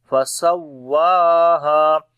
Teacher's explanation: واو کے اوپر نبر کریں گے، واو کی آواز لاؤڈ کریں گے، بلند کر کے پڑھیں گے ، اور اکھڑی زبر ہے اس کے اوپر لمبا کریں گے،